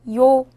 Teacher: 요는 먼저 이를 소리내다가 바로 이어서 오를 소리내며 발음합니다.